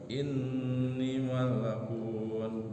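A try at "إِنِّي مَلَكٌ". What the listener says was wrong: Jangan malak sukun disukunkan karena waqaf.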